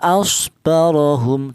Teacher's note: Di sini ada ro yaitu ada huruf ra yang berharakat fathah. Dibaca tafhim. Dibaca atau dibaca tebal. Alasannya ada huruf ro yang berharakat fathah. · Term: tafkhim